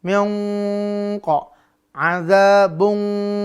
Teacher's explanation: Q dia tebal maka harus naik terangkat pangkal lidahnya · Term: ikhfa